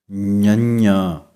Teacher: ਜਿਵੇਂ ঙ ਅੱਖਰ ਗਲੇ ਅਤੇ ਨੱਕ ਦੇ ਵਿੱਚੋਂ ਪੈਦਾ ਹੁੰਦਾ ਹੈ, ਹੁਣ ਗਲੇ ਦੀ ਵਰਤੋਂ ਨਹੀਂ ਹੋਵੇਗੀ, ਜੀਭ ਤਾਲੂ ਨਾਲ ਲੱਗੇਗੀ ਅਤੇ ਨੱਕ ਦੇ ਰਾਹੀਂ ਆਵਾਜ਼ ਆਵੇਗੀ